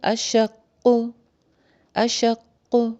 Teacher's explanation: قلقلہ بھی کریں گے اور اس کی شد کی شدت بھی برقرار رہے گی. 2 لیٹرز کے برابر ٹائم لگ جائے گا.